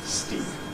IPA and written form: stiːp (Steep)